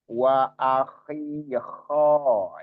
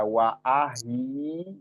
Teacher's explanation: makrotnya ada di tenggorokan paling atas. Dengar seperti suara orang ngorok.